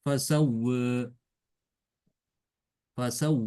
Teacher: Jadi dia dimiringkan tapi sedikit. Itu namanya taklil.